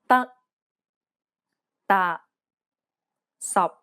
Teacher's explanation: in english releasing a strong burst of air this is incorrect the final p t and k are unreleased in cantonese this means that you must not release a burst of air when pronouncing this sound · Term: final stops